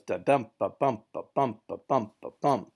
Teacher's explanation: And it is the good old Shakespearean iambic pentameter. And iambic meaning that it's a short or an unstressed syllable followed by a stressed syllable, and pentameter meaning that happens 5 times, 5 feet to the line.